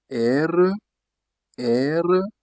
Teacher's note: That is guttural, throat sound.